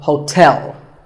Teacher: there are two syllables ho like the english word tell as in tell me the stress is on the second syllable